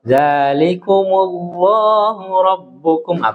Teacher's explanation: Di lafdzul jalalah itu tidak boleh terlalu panjang